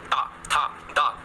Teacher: आपकी जीभ देखिएगा दांत से टकरा रही है। बोल के देखो, ता था दा था, तो दंत हो गया।